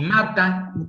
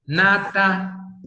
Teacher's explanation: los dos rasgos en común es que son nasales, que son oclusivas, pero una es bilabial y la otra es alveolar, ¿no? Bilabial porque utilicé los dos labios, y alveolar porque la lengua se me fue al alveolo, atrasito de los dientes, ¿sí?